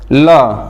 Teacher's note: पार्श्विक व्यंजन, ल का उच्चारण स्थान, मतलब ल को जब हम उच्चारित करते हैं, ल का उच्चारण करते समय हमारी सांस जो है जीभ के बगल से गुजरती है